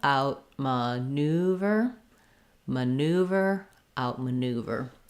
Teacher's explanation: And in American English, we say that with an oo, no glide, no new, but new, neuver. There's going to be a little secondary stress on the out syllable. You might think about that like ow and a T, out, maneuver.